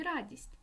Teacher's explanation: р твердий приголосний а голосний дь М'який приголосний і голосний с твердий приголосний ть М'який приголосний